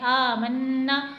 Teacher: खड़ी हरकत को भी एक अलिफ के बराबर यानी हुरूफ़े मद्दा की तरह थोड़ा सा खींच कर पढ़ते हैं।